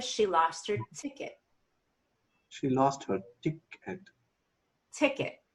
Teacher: you'll come down in energy on the ET so a little less energy there